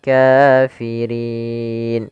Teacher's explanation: huruf Kaf kemudian palfal Rin ada Mad Arid di sukun ini Mad yang terjadi di akhir bacaan disebabkan karena ada sukun Arid yaitu pada lafal Nun yang awalnya berharakat karena kita waqaf dia